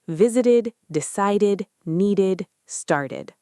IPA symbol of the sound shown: ɪd